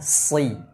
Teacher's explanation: Pada kata sirata ada sad, tebalkan si karena sad bersifat isti'la, juga itbaq. Karena jika tidak dibaca dengan tebal maka akan mirip seperti huruf sin. Selain ditebalkan juga harus disempurnakan harokat kasrohnya.